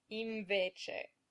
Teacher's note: So what you want to do is put your teeth on your lower lip as if you were going to say v, then without moving them, make kind of a hum. Invece.